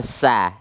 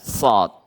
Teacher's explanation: kalau sa udaranya keluar sa. Tapi kalau sad udaranya berkumpul di dalam sad. Di dalam dia.